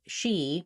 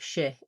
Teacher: the main difference really is actually tense versus lax and the position of the vowel